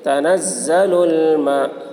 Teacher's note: لام کے اوپر کھڑا زبر ہے، کھڑا زبر برابر ہوتا ہے الف مدہ کے، اس لیے کھڑا زبر کو ایک الف کے برابر کھینچ کر پڑھیں گے۔ حرف مد کے بعد حمزہ اسی کلمہ میں ہے، اس لیے مد متصل ہوا، مد متصل کو 3 یا 4 الف کے برابر کھینچ کر پڑھیں گے۔